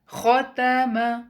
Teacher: الف، الف خالی ہے اور اس سے پہلے زبر ہے، تو ہم خو کی آواز کو 2 کاؤنٹ لمبا پڑھیں گے اور باقی تمام حروف کو سنگل کاؤنٹ